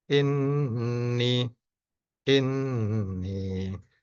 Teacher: dengung ditahan dua atau tiga harakat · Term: Nun bertasdid